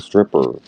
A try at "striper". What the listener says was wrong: A striper fish. I think it's pronounced striper, not stripper.